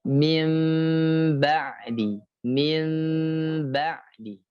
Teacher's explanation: Dia ya menjadi atau berubah, atau artinya iqlab itu berubah atau terbalik. Ya, menjadi mim dengan gunnah seperti disamarkan